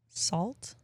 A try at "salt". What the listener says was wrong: You pronounce the T at the end say it again. You say salt.